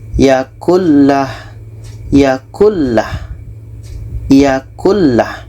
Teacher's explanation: Nun masuk ke lam dan tidak ada dengung. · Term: idgham bilaghunnah